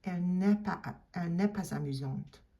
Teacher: you do have to do the liaison on the S.